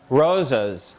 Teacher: the first syllable of this word has a slightly higher uh amplitude it's a bit louder it's stressed